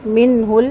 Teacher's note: نون ساکن کے بعد ہا ہے، اظہار ہوگا